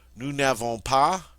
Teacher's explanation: The e of ne cannot come up against a vowel. We've got to get rid of it and make an elision with an apostrophe.